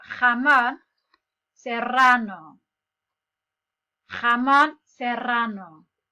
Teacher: So the J sound comes from your throat.